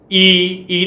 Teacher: ਈ ਤੇ ਆਪਣੀ ਜੀਭ ਤਾਹਾਂ ਨੂੰ ਚੱਕੀ ਜਾਂਦੀ ਆ, ਇਸ ਕਰਕੇ ਇਹ ਅਗਲਾ ਸਵਰ ਆ